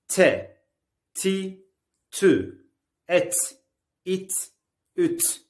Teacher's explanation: T harfi dilin ucunun üst ön dişlere değmesiyle çıkar. İnce ve keskin bir harftir.